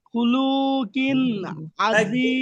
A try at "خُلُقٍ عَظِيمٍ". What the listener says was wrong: শুনেন, খুলু টান দিলেন কেন? খুলু লু কি টান আছে ভাই? লামের উপরে কি ওয়াও আছে? আরো তাড়াতাড়ি, খুলুকিন, খুলুকিন আযীম, খুলুকিন আযীম।